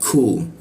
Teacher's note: di siku tenggorokan, lidahnya diturunkan sehingga pengucapannya itu ada hembusan udara